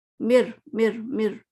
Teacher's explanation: ہمیں نون کی آواز نہیں آ رہی، ہمیں کوئی اور لیٹر کی آواز نہیں آ رہی، ہمیں رو ہی سنائی دے رہا ہے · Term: کامل